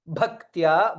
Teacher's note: bha is mahaprana, k, ta, ya, three letters are there.